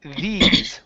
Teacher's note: And it doesn't matter if it's a long E sound either, because we also have these, which is a voiced TH with a long E sound